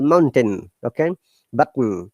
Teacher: when the T comes from the glottis, the glottis is the vocal part of our vocal cord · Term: glottal T